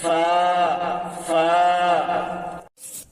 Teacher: 13 নম্বর মাখরাজ উপরের দুই দাঁতের আগা, উপরের দুই দাঁতের আগা নিচের ঠোঁটের উপর বসাইয়া ফা উচ্চারিত হয়